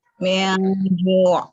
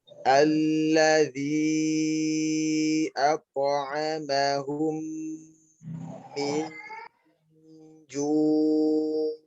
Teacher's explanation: ada ikhfa pada huruf nun mati bertemu dengan jim